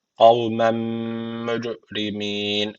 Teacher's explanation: Guneli bir şekilde bağlıyoruz. Cim harfi cezim aldığı için kalkale tecviti var. Birazcık vurguluyoruz.